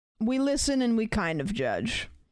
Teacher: the way she said it like the vocal fry is insane